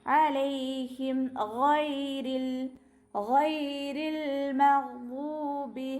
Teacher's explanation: ഇവിടെ പുള്ളില്ല, ഗൈനാണ്. തൊണ്ടയുടെ ആദ്യ ഭാഗത്തു നിന്നാണ് ഗൈന് വരുന്നത്.